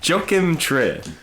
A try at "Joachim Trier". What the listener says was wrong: No, Joachim. Yo. They pronounce J's like your.